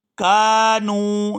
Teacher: وَلَكِن كَانُوا، كَانُوا، یہاں کاف کو بھی لمبا کیا جائے گا کیونکہ اس کے ساتھ الف مدہ ہے، اور آگے نون کو واو ساکن کے ساتھ ملائیں گے تو کھینچ کر ادا کریں گے کیونکہ یہ واو مدہ ہے